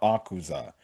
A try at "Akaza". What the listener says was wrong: It's pronounced Akaza, not Akuza.